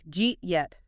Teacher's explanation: >> Well, it's the path of least physical resistance for the mouth. The hard D of did and the Y of you smash together at high speed and create that J sound. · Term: assimilation